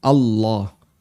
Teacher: Dan Allah kalau pakai standar tajwid berarti dia dibaca tafkhim